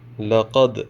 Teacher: یہاں دال حروف قلقلہ میں سے ہے، ہم یہاں پہ قلقلہ کریں گے۔